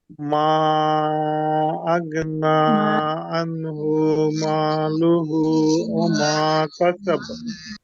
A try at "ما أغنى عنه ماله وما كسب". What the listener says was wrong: মাতে তিন আলিফ লম্বা। আও, গইনটা মোটা হরফ না পাতলা হরফ? মোটা হরফ। এখন মোটা হরফ হলে তো আওয়াজ মোটা হবে। বলি আগ না বলি তাহলে গইনটা পাতলা হয়ে যাবে, পাতলা হয় না।